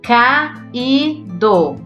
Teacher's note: o I é mais forte e forma hiato com a vogal A.